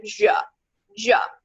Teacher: it's two sounds it's not a pure sound because it it moves from a plosive duh to a fricative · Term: affricates